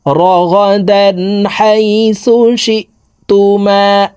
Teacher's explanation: এই তানউইনওয়ালা দালটি গুন্না ছাড়া স্পষ্ট করিয়া পড়ব